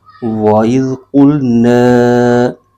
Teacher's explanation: لام کو قاف کے ساتھ ملائیں گے اور قاف حروف مستعلیہ کا حرف ہے، اس کو پر یعنی موٹا کر کے پڑھیں گے